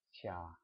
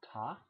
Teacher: You hear that the ya is after this t, so it makes the t soft.